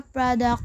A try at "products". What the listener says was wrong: The learner omitted the words Olda and then omitted the sound s on the word products.